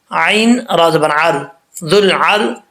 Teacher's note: عین کو کلیئر کرنا ہے، یہ نہ ہو کہ عین پڑھتے وقت حمزہ پڑھتے رہیں آپ، حمزہ کا ساؤنڈ نہیں نکالنا